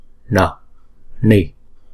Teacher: Rồi chữ pa này là hai nhịp, bởi vì chữ A là trường âm, pa, ni. N này là có dấu nặng, chúng ta phải uốn cong lưỡi lại và búng ra.